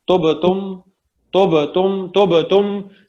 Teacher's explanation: کلکلا ضرور ہوگا, ایکو ضرور ہوگا, باؤنس بیک ہوگی ورڈ جو ساؤنڈ ہے